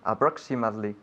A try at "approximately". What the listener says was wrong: Now, not approximately, but approxi. We have a different way of pronouncing the I in this case in English. Approximately.